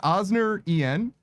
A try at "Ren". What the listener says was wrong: It's Ren. You forget about the first letters. It's Ren. It's Ren, yeah. The rest is silent.